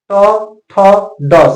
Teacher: तो ट वर्ग का उच्चारण स्थान होता है मुर्धा